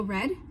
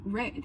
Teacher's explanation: elongated vowels. For example, the word red in normal American accent and red in Southern American accent